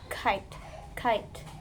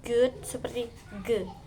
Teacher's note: Dihasilkan ketika Anda mengangkat bagian belakang lidah dan ke velum untuk memblokir atau membatasi aliran udara. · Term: velar